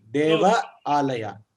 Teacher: So Deva is Hrasva Akara, one matra for pronunciation. Alaya is A Dirgha, two matras for pronunciation. Yes. because it's a dirgha, Ah, dirgha swara.